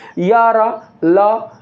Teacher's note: आपके मुख में उपस्थित जो जीभ होता है वो दोस्तों बीचोबीच ही उपस्थित रह जाता है